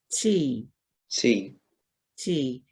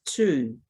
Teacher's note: u the u sound and maori the t has a slight it's an aspirated sort of a t it's got a slight s sound to it